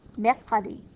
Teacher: Mercredi is glottal, so you got to get that from the back of your throat.